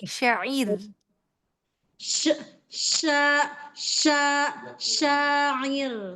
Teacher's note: Rnya tarkik, ya. Jadi tidak syair, tidak syair, tapi dia tipis.